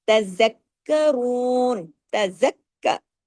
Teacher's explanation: تا کو ہم نے باریک پڑھا، زال کو ہم نے باریک پڑھا، را کو ہم نے ڈبل پڑھنا ہے. زال کاف زبر زک، کاف زبر کا، زکا. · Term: تشدید